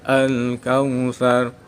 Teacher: Hukum bacaan ro tebal atau tafkhim. Ada huruf ro dibaca mati didahului fathah. Cara membacanya ro dibaca tebal.